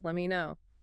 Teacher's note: The T in let drops before the M and me reduces let me know.